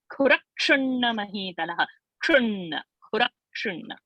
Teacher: Mahavirya, we have to lift the Visarga, then Kha Mahaprana, Khura, and that Ra should be Dvitva. So Khura, Ksha should not be Sha, it's not Shu, and so Kshu, and then Na also, that is Murdhanina, and then it is double Na